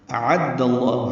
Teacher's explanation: حمزہ اقصى حلق سے، عین وسط حلق سے ادا کریں گے، واضح بالجہر حمزہ ادا ہوگا. اعد اللہ، دال کو لام اسم جلالہ سے ملائیں گے، دال کی زبر کی وجہ سے لام اسم جلالہ پر پڑھیں گے.